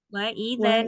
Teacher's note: Nun tasdid harus ditahan. Jangan semuanya jadi cepat.